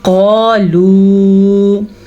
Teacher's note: یہ واو مدہ ہے، اسے ہمیشہ کھینچ کے پڑھا جاتا ہے